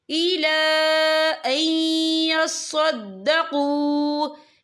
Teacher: یا دیکھیں الا، یہاں خالص سے پہلے زبر ہے اور اس پر چھوٹی سی مد بھی ہے، تو ہم یہاں 3 یا 4 حرکت کے مطابق کھینچ کے پڑھیں گے۔